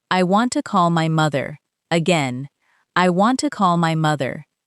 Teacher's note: Give more energy to call and mother.